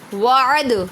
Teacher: عد پہ کلکلہ کریں گے، دال مشدد ہے